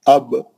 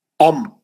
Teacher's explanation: اب جو ہے بہت ہلکا ملتے ہونٹ جو ہے ہلکے ملتے با میں، لیکن میم میں سختی سے ملتے ذرا. ام ہے نا، ذرا ہونٹ اور بھینچے جاتے اور گھٹ پکڑے جاتے، ہے نا.